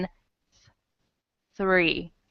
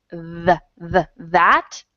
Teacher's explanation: So in three, TH is unvoiced, but in the word that, okay, the TH is voiced.